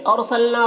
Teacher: را کو پر پڑھنا ہے، نا میں الف مدہ ہے، 1 الف کے برابر کھینچیں گے۔ مر را کو یہاں پر پر پڑھیں گے، نون ساکن کے بعد را ہے تو ادغام تام ہو رہا ہے، بغیر غنہ کے پڑھیں گے، را کو پر پڑھنا ہے۔